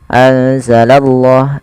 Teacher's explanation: dan kita menebalkan pada lafal Allahnya. Karena di sini lafzul jalalah yang didahului dengan huruf fathah atau dhammah, maka dia akan ditebalkan huruf Allahnya.